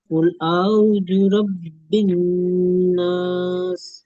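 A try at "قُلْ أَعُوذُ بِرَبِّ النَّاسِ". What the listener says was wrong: আউযু, তারপরে বিরব্বিন নাস, বাজের আছে। হ্যাঁ, এখানে আইন অ পেশ ও, আইন ও মাদ্দা হবে, এটা খেয়াল করবেন। কুল আউযু বিরব্বিন নাস। কুল আউযু বিরব্বিন নাস। বাটা ছেড়ে যাচ্ছে, এটা খেয়াল করবেন। কুল আউযু বিরব্বিন নাস।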